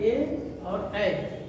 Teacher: ए और ऐ का उच्चारण स्थान क्या है? कंठ तालु है।